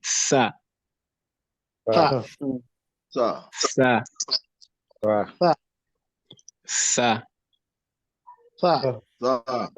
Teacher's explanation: it's safe to say that this sa is without any voice.